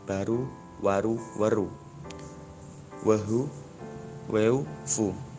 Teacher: Mula-mula fonem R menjadi H, kemudian H menghilang dari bentuk itu, dan akhirnya kedua vokal yang tadinya menghapit H mengalami proses sandi dan dalam menjadi U. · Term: kontraksi